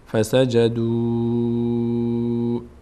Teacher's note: اینجا وا باید مد بشه باید کشیده بشه